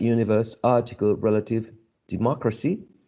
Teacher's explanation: the third syllable from the right to the left was the one which carried the stress